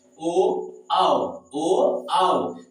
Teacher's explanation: कंठ और ओठ दोनों के मेल से उच्चारण होता है, इसीलिए इसको कहते हैं कंठोस।